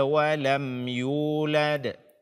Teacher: berikanlah hak Qalqalah pada huruf Dal sukun tersebut